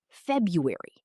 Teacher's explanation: 3 syllables in natural speech. Tip: the first R is often silent in everyday speech. Many native speakers say FEB-yoo-ery.